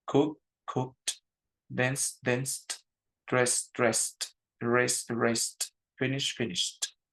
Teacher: tenemos la oportunidad de solamente poner d pero el sonido decirlo como una t · den dress dress r raced Finish finished todos tienen Ed porque terminan con una consonante que no genera un sonido o que no genera movimiento en mis cuerdas vocales